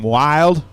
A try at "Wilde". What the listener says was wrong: It's Wildy. The E has an accent mark on it. Therefore, you pronounce it. Wildy. It's W-I-L-D-E. Wildy.